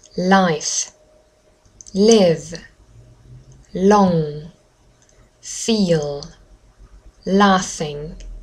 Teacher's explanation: the tip of my tongue um just touches um behind my teeth